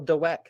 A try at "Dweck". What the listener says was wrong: Well, I think it's Dweck, but You're overpronouncing the W. It's not Dweck.